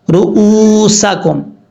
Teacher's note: رؤوسکم، را پیش رو، حمزہ واو پیش او، رؤو، سین زبر سا، کاف میم پیش کم، رؤوسکم، را کے اوپر پیش ہے، را بھی پر پڑھا جائے گا۔ حمزہ کے بعد جو واو ہے یہ واو ساکن ہے، واو ساکن سے پہلے جب پیش ہو تو واو مدہ پڑھا جاتا ہے، ایک الف کی مقدار اس کو لمبا کر کے پڑھیں گے۔